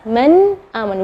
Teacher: Kita kasih contoh misalnya dari kalimat dari hamzah misalnya man amana. Nun sukun ketemu dengan hamzah, maka bacanya nunnya yang jelas